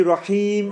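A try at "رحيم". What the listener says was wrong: Rahim. Yeah, your ha is weak. The way you say ha. Rahim.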